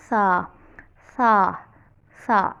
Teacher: ज़ुबान आपने निकाल के ऊपर वाले दांत आपकी ज़ुबान को लगेंगे और आपने वहाँ से आवाज़ निकालनी है सा, सा, सा, ऐसे, क्योंकि इसमें विज़ल साउंड नहीं आनी चाहिए।